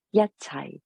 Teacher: Yet is number one, yet, the first tone, yet, and then high is fourth low falling.